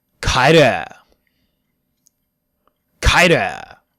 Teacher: There is a lax vowel that is very close. Try to say the Japanese u and pull your tongue down and back just a little.